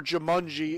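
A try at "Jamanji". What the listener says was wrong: There's no U! That's an A! That's not how you pronounce that!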